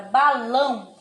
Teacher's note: ela tem um som nasal você fala ela pela boca e também sai assim um som fechado saindo pelo nariz é isso que se chama o som nasal tá bom então